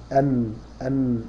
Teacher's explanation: النون من طرفي تحت مع ما يحاذيه · أن شو اللسان راح فين؟ طرف اللسان راح مع اللثة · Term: مخرج النون